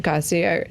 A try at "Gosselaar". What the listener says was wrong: Gosselaar. You're adding a syllable.